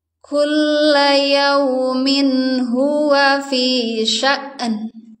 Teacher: karena pengucapan Hamzah itu kan kuat dan tegas maka ketika sukun ini harus dihentak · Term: dihentak hamzahnya